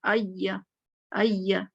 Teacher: पहले जबान आई में पीछे ऊपर जाएगी, टच होगी, फिर या में नीचे आ जाएगी